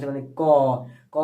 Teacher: तो यहां से निकल क क अगर उच्चारण की जा तो कंठ के पास से निकलता है